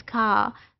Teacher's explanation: आ में जो पोजीशन उसकी शुरू में थी, वही एंडिंग में भी है। सो मोनोफोथोंग है एंड साउंड इज स्ट्रेच्ड, और इसको लंबा जब खींचते हैं तो ये लॉन्ग वाउल होता है।